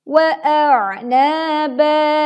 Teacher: Hamzah terlebih dahulu kita baca, baru kemudian kita menekan suara di huruf ain